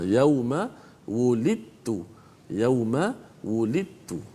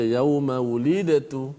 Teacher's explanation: bacaan dal yang mati itu dimasukkan secara total ke dalam huruf ta. Maknanya dari sudut bacaan, dari sudut sebutan, dal dah tak ada dah. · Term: Idgham